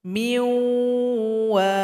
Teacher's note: Kemudian di sini nun sukun berjumpa dengan waw. Sifat gunnah atau sifat dengung pada huruf nun terbawa kepada huruf waw. Sehingganya waw dengung.